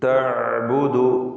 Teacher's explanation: ഐൻ തൊണ്ടയുടെ മധ്യത്തിൽ നിന്നാണ് വരുന്നത്. തവസ്സുത്ത് അതിൻ്റെ സിഫത്താണ്.